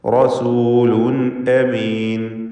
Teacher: റസൂലുൻ എന്ന ആ തൻവീനിനെയും ഇദ്ഹാർ ഹൽക്കി നൽകി വെളിവാക്കുക, മണിക്കാതെ ഉച്ചരിക്കുക